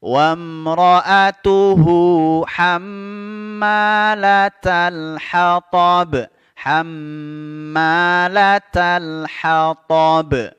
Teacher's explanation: mim tasdid tajibul gunnah, dia wajib didengungkan, ditahan dua harakat